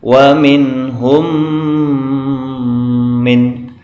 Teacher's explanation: yang pertama adalah valw Amin home Kwangmin home ah cara membaca dibaca dengung dengan mim sukun lebur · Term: Idgham Mutamatsilain